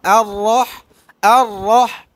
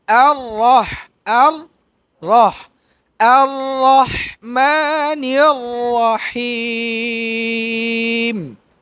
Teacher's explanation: আর রহ বলার সময় ঠোঁট গোল হবে না।